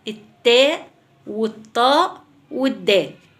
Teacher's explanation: طرف اللسان عند منبت الثنايا بطلع التاء والطاء والدال